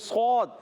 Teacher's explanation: صاد، نون کو صاد سے ملانا ہے، صاد کو موٹا رکھنا ہے، اس کا الف بھی موٹا ہو جائے گا